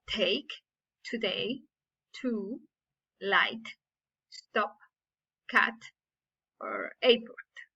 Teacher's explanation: It is a sound from the consonant pair group, and it is called the voiceless alveolar stop. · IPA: /t/